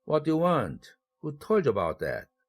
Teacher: 의문사로 시작하면 falling intonation을 사용하죠.